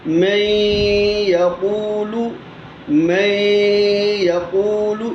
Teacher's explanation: ادغام کا غنہ مختلف ہے، جیسے نون ساکن کے بعد یا آ گیا، یہ یا جو ہے یہ حروف یرملون میں سے ہے، اور یا زبان کے درمیان تالو کے درمیان سے ادا ہوتا ہے۔ اسے ہم پڑھیں گے جیسے کہ ہے من یقول، تو ہم جب یہاں پر ادغام کریں گے تو ادغام اس کا ہوگا میں یقول، میں یقول، یہ غنہ ہے ادغام کا غنہ۔